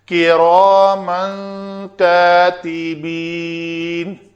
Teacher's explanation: را کو پر پڑھیں گے، را جب بھی پیش اور زبر کے ساتھ ہو پر پڑھی جاتی ہے، زیر کے ساتھ ہو تو پتلی پڑھی جاتی ہے، تو را نہیں کہیں گے۔